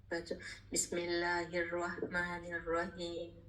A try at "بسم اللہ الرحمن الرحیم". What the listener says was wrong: تھوڑا سا ماشاءاللہ ویسے بالکل صحیح, بس ہا کے مخرج پہ آپ کو تھوڑا کام کرنا ہے.